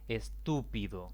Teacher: la mayor intensidad de la voz recae en la antepenúltima sílaba